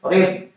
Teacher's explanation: Ditahan. Jangan ada qalqalahnya.